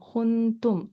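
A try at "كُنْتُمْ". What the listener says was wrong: नहीं, काफ के साथ मीम है, कुम तुम।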